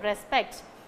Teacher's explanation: Okay, for this word, whether it's a noun or verb, whatever it is, it will take only the second syllable. Okay, the stress must fall on only the second syllable for this word alone